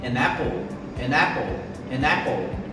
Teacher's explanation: linking sounds, que nada mais é do que juntar essas duas palavras como se fosse um som só. Então, ao falar uma maçã, é bem provável que eu fale an apple, an apple, an apple.